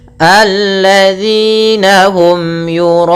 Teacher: pada lafal un ada kembali bacaan mad arid disukun, yaitu kita boleh memanjangkan 2 harakat, boleh 4, boleh pula 6 harakat